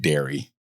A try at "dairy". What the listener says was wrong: You're saying dairy with an A. I'm saying with an E.